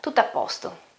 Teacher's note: when I pronounce it quicker, faster, the first O isn't pronounced that well.